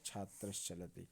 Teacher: अब हम देख पा रहे होंगे कि छात्र धन चलति में च वर्ण आया है, चा का उच्चारण स्थान दंत होता नहीं, चा का उच्चारण स्थान क्या होता है, तालु होता है। तो यहाँ तालव्य सा का प्रयोग करेंगे विसर्ग के स्थान पे और हो जाएगा छात्र चलति।